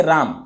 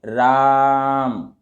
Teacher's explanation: या फिर इसी प्रकार से अगर मैं यहां पर लिख दूं राम, ठीक है, इस प्रकार से अगर लिख दूं यहां पर, तो यही वाला यहां पर आ गया, तो इसको हम लोग रा को बहुत लंबा खींचेंगे 3 उच्चारण के समय तक। इसको फिर पढ़ेंगे राम, इस प्रकार से आप पढ़ेंगे। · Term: प्लुत स्वर